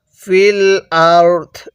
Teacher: এখন যদি ওয়াকফ করি তাহলে ফিল আরদ, দটটা হালকা উচ্চারণ করব, রটা পরিপূর্ণ উচ্চারণ করব